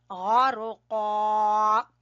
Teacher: والنازعات غرقا، نون کے اوپر ہم غنہ کریں گے اور کھڑی زبر کو کھینچیں گے، اور غرقا، پورے گرین حرف ہیں، دیکھیں پورے پر پڑے جائیں گے، غین بھی، را بھی، قاف بھی، ٹھیک ہے، یہ موٹا قاف ہے